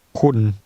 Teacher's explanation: The word for you is pronounced with an even mid-level tone.